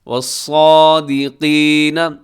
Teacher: اس میں صاد موٹا ہے اور قاف بھی موٹا ہے